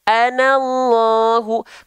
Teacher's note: Lam jalalah atau lam pada lafaz Allah dibaca tebal dengan vokal O. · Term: tafkim, Tafkhim